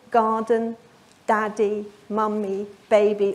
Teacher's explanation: All of these words have a strong, weak syllable stress pattern.